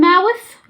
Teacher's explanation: حاول لما تقول mouse دي مش هتطلع لسانك، لكن دي معناها فأر اللي هو بتاع اللي هو بتحركه في الكمبيوتر يعني. لكن لما اقول mouth دي th اطلع لساني عشان اعرف افرق ما بين النطقين